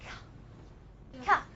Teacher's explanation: Remember, if you can feel a little bit of vibration, this is because of the vowel a when you say ka. But when you start saying ka, there's actually no vibration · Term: voiceless